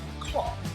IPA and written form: kɑː (car)